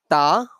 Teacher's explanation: while saying ta we use tip of the tongue and root of upper front teeth